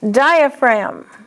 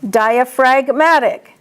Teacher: See, diaphragm is a noun, diaphragmatic is an adjective. In diaphragm, the G is silent, but in the adjective, diaphragmatic, the G is pronounced.